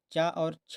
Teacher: चा और छा का उच्चारण स्थान ये तालु है।